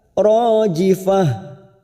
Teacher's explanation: ro fathah bertemu Alif dua harakat